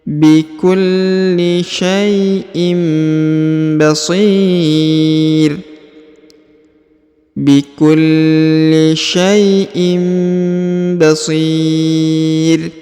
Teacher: huruf tanwin in bertemu dengan ba jadi didengungkan ya, dan berubah menjadi huruf mim. Huruf innya berubah menjadi huruf mim.